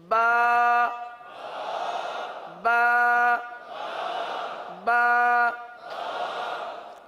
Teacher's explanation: اب اس کی مقدار بھی ہے نا، حرف کی مقدار بھی ہے، یہ جو ہم حرف ادا کر رہے ہیں ایک الف تک کھینچ کے پڑھ رہے ہیں